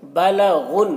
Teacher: غین کو پر پڑھنا ہے کیونکہ یہ حروف مستعلیہ میں سے ہے، اور غین کو نون سے ملا کر پڑھنا ہے